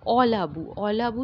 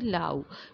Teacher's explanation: সেই অলাবুর যে অটা অটা উঠে গিয়ে লাউ হয়েছে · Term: আদি স্বর লোপ